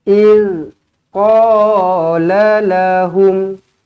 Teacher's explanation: Hum, matikan dengan jelas di sini izharus syafawi.